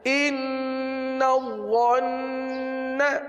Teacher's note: یہاں پر تھوڑا سا رک کر پڑھنا ہے تشدید کی وجہ سے، اور آگے نون پر گنہ کرنا ہے